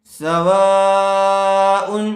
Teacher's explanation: حرف مدہ کے بعد حمزہ اسی کلمے میں آیا ہوا ہے اس لیے مد متصل کا قاعدہ ہوگا، اس کو تھوڑا کھینچ کر پڑھیں گے